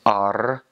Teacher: Finns roll their R's very hard, a lot more so than like Spanish. So they really, especially some of the older people, really get into that R.